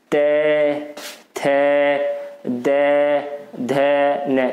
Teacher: तो जीभ कहाँ लग रही है हमारी? जीभ जो दांतों में आकर लग रही है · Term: दंतीय